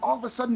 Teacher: Off is reduced to of and is linked to another schwa sound. So we hear Oliver. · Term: connected speech